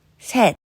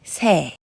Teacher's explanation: 3, 셋, drop S sound, making it 세.